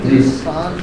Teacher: غنہ کی آواز آئے گی, نون نہیں ظاہر ہوگا. انسان, اگر آپ نے یوں پڑھ دیا انسان تو نون نکل گیا باہر.